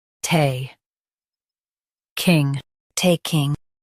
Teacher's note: Stress ta and keep king smooth.